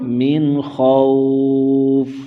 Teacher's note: من پر اظہار ہوگا، یعنی غنہ نہیں کریں گے۔ خوف، خا کو موٹا کریں گے تو مد لین عارض ہوگی، یعنی تین الف کھینچ کر پڑھیں گے۔